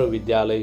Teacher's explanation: विद्या शब्द के आखिरी का आ और आलय शब्द के शुरुआत का आ, यह दोनों वर्ण के मेल से दीर्घ आ का मेल होता है और विद्यालय शब्द बन जाता है।